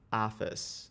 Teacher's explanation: if you go to New York, you're likely to hear, you know, not office, but office, so with the long ah